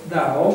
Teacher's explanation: questo Dao sarebbe una metà tra la D e la T, no? Tra la T di Domodossola e la T di Torino, una roba da via di mezzo, no?